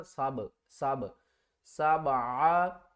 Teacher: खलक़ सबआ, सीन बा ज़बर सब, बा साकिन है, यहाँ पर कलकला करेंगे यानी कि बा को थोड़ा सा हिलाएंगे